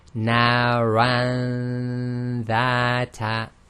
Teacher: So again, you have to hold your nose and check if it's actually in the nasal passage itself. Now the dha here is a light letter, so the ghunna was light